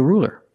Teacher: you used a light L because the L is between vowels